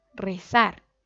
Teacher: nosotros cargamos la voz en la última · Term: aguda